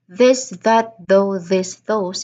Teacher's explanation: it totally vibrates because it's a voiced th sound.